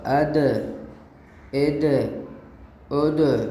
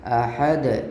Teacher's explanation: یعنی دیکھیے شروع والے 2 حرف متحرک ہیں اور آخری حرف جو ہے وہ ساکن ہے اور وہ دال ہے، تو دیکھیے کیسی آواز ٹکرا رہی ہے، احد۔ یعنی آواز جہاں دال کا مخرج ہے وہاں زبان لگ کر واپس آتی ہے۔ اس کا مطلب یہی ہوتا ہے کہ مخرج میں آواز لگ کر پھر واپس آ جاتی ہے۔ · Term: قلقلہ